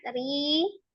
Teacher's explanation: Ri juga matobi'iyah ya, dibaca 2 harokat. Ri. Ro-nya dibaca tipis ya, berbaris kasroh.